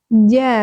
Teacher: Jalasa ja tengah lidah menyentuh langit-langit. Ja. Jadi tidak ada C-nya, bukan ja.